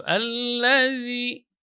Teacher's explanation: huruf za ini yang mengalir hanya suara, tidak boleh mengalir udara. Jadi tidak ada udara yang keluar karena dia bukan huruf hamas.